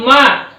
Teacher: नासिका और ओष्ठ से इसका उच्चारण किया जाता है